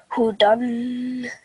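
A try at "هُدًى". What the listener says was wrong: Very nice. Excellent. Well done. Very good.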